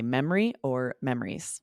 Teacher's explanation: Same plural memories. Or you can drop that middle syllable and say memory or memories.